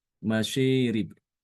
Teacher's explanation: mengimalahkan alif yang ada pada kata masyarib ya dibaca dengan masyirib